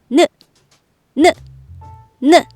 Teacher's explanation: 느를 말하려면 혀끝을 올려 윗니 뒤쪽에 붙이고 준비해야 해요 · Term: 니은